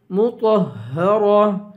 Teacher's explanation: یہاں بڑی ہاں ہے، سینے سے آواز نکالیں گے